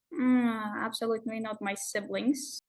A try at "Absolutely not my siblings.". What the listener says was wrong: Love the intonation. Absolutely not my siblings. Really good.